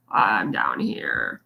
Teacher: fry is when your voice is kind of what we call bottomed out or it's like the lowest part of your range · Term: vocal fry